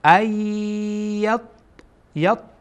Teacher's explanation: بعد از نون ساکن در اینجا یا آمده و یا از حروف ادغام هست، بنابراین ادغام میکنیم، یعنی مستقیم گویا که همزه با یا در اینجا وصل میشه.